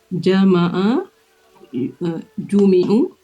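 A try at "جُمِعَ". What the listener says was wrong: Jumi'ah. Fi'il madhi lampunya fathah, ingat ya?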